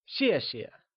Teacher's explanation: the second time we say xie, the sound softly fades away , so it becomes Xièxie